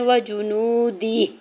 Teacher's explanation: واؤ ساکن سے پہلے نون کے اوپر پیش ہے، واؤ مدہ اور دو حرکت کھینچ کے ادا کریں گے